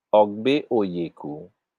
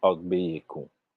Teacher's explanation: the phonological process of vowel elisions delete the second of the two vowels in these derivations. In other words, the deletion is constant.